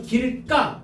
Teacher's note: 그러면 길가 얘가 지금 뭐로 발음돼? 까 된소리로 발음되잖아